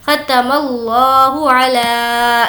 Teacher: ला को खींचेंगे क्योंकि इस पर खड़ा ज़बर · ख़तमल्लाहु, ख ज़बर ख, ता ज़बर ता, ख़ता मीम लाम ज़बर मल, ख़तमल, लाम खड़ा ज़बर ला, ख़तमल्लाह पेश हु। इस लफ्ज़ अल्लाह को हम पुर पढ़ेंगे क्योंकि इससे पहले ज़बर है। लफ्ज़ अल्लाह से पहले अगर ज़बर हो या पेश हो तो हम उसको पुर पढ़ेंगे।